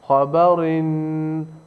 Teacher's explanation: دو زیر کے ساتھ را باریک پڑھا جائے گا